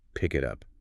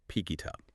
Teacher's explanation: by linking the consonant to the vowel, you bypass the glottal stops entirely. The K sound shifts to become the onset of the I, and the T shifts to the U.